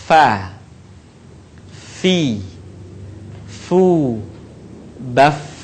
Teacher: Huruf fa keluar dengan menyentuhkan ujung dua gigi seri bagian atas dengan bibir bawah bagian dalam. Diucapkan dengan mengalirkan suara sekaligus dengan udaranya dengan lembut.